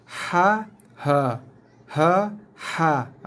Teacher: ha ini adalah huruf yang keluar di kawasan tengah leher ataupun kawasan level 1, tingkat 1, first floor. Manakala huruf ha sama dengan rumahnya dengan A.